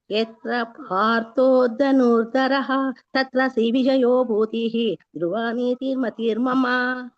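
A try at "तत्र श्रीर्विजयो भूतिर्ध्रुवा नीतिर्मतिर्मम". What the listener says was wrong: ಮಹಾಪ್ರಾಣಗಳನ್ನ ಸ್ವಲ್ಪ ಒತ್ತಿ ಹೇಳಲಿಕ್ಕೆ ಪ್ರಾಕ್ಟೀಸ್ ಮಾಡಿಕೊಳ್ಳಿ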